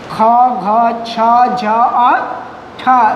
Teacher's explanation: ये पांच व्यंजन जो होते हैं आपके महाप्राण व्यंजन होते हैं